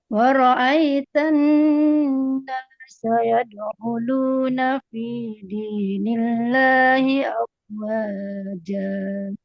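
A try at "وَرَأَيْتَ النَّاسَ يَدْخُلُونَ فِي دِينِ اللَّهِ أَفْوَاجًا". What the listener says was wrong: Tinggal kho, kasih suara ngorok sedikit aja.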